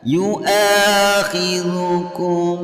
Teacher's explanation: membacanya bunyi kum didengungkan dan dipanjangkan sampai 2 harokat. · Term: ikhfa syafawi